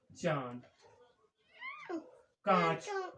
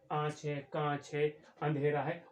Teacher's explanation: अर्थात जब ये उच्चारित करते हैं, इसका उच्चारण नाक से निकलता है। हवा, वायु जो निकलती है इसकी नाक से निकलती है, मुख से भी निकलती है लेकिन नाक से ज्यादा निकलती है। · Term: अनुनासिक